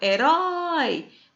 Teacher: Porém, herói, ele não é paroxítono. Ele é uma palavrinha oxítona, quando a sílaba tônica é na última ou na primeira de trás para frente.